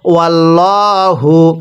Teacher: হা পেশ হু ওয়াল্লাহু এটাকে ওয়াল্লা পড়লে পড়াটা শুদ্ধ হবে না এখানে আল্লাহ শব্দের পূর্বের হরফের উপর জবর আর জবর থাকলে মোটা করে পড়তে হয়